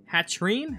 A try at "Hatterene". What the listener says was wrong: Hatterene. Okay, I feel like you don't pronounce some of the letters that you need to. Hatterene. It's not Hatrine.